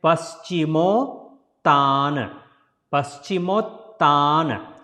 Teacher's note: So that is the combination of two words, Pashchim and Tana. When you put Pashchim and Tan together, then O is added as a extra sound, then it becomes Pashchimottaana. Otherwise, if you put it separate, it will be Pashchim and Tan.